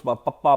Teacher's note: ਪੱਪਾ is the outer, ਜਿਹੜਾ ਬੁੱਲਾਂ ਦਾ ਜਿਹੜਾ ਸਭ ਤੋਂ ਬਾਹਰਲਾ ਰੂਪ ਹੈ, ਹਿੱਸਾ ਹੈ, ਉਹਦੇ ਨਾਲ ਹੀ ਪੱਪਾ ਆਖਦੇ ਆ।